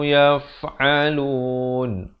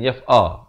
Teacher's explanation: Ini huruf ain, makhrajnya di pertengahan kerongkong.